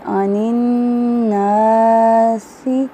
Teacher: عین وسط الحلق سے ادا کریں گے. یہاں پہ نون مشدد ہے, ناک میں آواز لے کر جائیں گے. عن الناس, الف مد ایک الف کے برابر لمبا کریں گے.